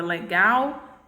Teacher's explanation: a última sílaba é a sílaba gal ela é minha sílaba tônica por quê porque essa sílaba aqui eu pronuncio ela com mais